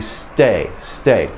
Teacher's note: i feel that it's not the tip of the tongue it's a little further back on the tongue making the the the explosion for the t stay stay i